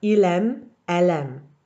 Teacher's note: the le from the end of il and elle sounds like the beginning of the next word. So it sounds like the verb is l'aime, not aime.